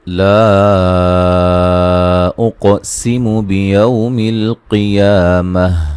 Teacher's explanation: قاف کو موٹا ادا کریں گے اور قلقلہ کریں گے